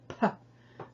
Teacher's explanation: Pe with the dagesh inside of it makes an explosive little puff of air when you say it